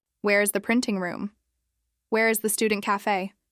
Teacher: she got used to slowing down and stressing the question word